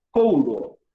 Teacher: Esse u tem som de W. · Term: semivogal